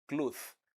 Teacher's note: The th at the end of cloth is a dental sound.